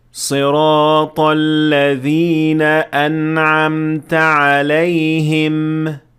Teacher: صحیح طریقہ یہ ہے کہ میم پر رکنے کے بعد ہونٹ بند ہو جائیں اور اس کے بعد کوئی اضافی آواز نہ ہو، بس اتنا دھیان رکھیں کہ میم صحیح طور پر ادا ہو، اس طرح۔